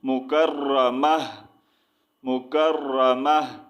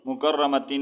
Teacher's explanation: تا کو جو ہے اس کا ساؤنڈ ہم نے ہا میں چینج کر دینا ہے